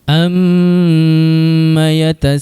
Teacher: Tu sin baris atas dibaca dengan kadar 4 atau 5 harakat, kemudian diikuti pula dengan huruf hamzah baris atas. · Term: mad wajib muttasil